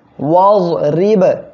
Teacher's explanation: র অক্ষর এর নিচে যখন জের হবে র অক্ষরটা চিকুন করে পড়বেন